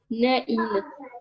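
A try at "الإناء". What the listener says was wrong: El-ina-a. El-ina-a. Et je t'ai dit, quand il y a un alif lam, jamais de tanwin. Ni en an, ni en in, ni en un, jamais.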